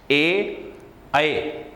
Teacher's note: ये कंठ और तालु दोनों से उत्पन्न होती है, इसलिए इसे कंठ तालव्य ध्वनि कहते हैं।